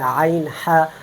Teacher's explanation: وسط حلق سے 2 حروف ادا ہوتے ہیں عین ح